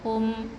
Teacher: Hum bukan hum. Jangan dengung jangan buka mulut, rapatkan penuh rapatkan bibir kita. Hum. Okey.